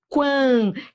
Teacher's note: eu tô indo do fraco pro forte. Quantidade é um ditongo crescente.